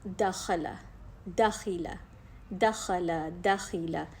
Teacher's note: ज़ुबान पीछे से तो पूरी ऊपर तालू की तरफ बुलंद नहीं हो रही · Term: इस्तिफ़ाल